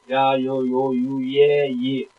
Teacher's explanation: 야니까 앞에 이가 짧습니다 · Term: 반모음